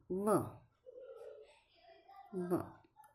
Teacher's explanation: હોઠ દાંતને સ્પર્શ કરે ત્યારે જે ધ્વનિ ઉત્પન્ન થાય તેને દંતોષ્ઠ ધ્વનિ કહેવામાં આવે છે તો જે હોઠળ્યો એ દાંતનો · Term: દંતોષ્ઠવ ધ્વનિ